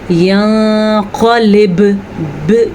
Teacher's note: یہ آپ کو جو جھٹکے کی آواز آئی ہے یہ قلقلہ ہے